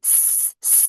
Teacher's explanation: Jadi ee maksud suara keluar dari melalui celah di antara dua gigi seri atas dan bawah itu ee suaranya itu berdesis ya keluar angin ee dengan berdesis ya seperti sifatnya itu sifatnya huruf zai sin dan shad ya. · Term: sifat saofir